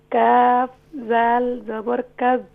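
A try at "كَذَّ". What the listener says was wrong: ذال کو کھینچا نا. کاف ذال زبر کذ.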